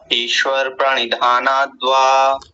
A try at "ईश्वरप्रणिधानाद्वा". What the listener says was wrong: ईश्वर नहीं ईश्वर र पूरा है अगर मान लीजिए जैसा आपने बोला ना आपके बोलने में यह ऐसा लिखा जाएगा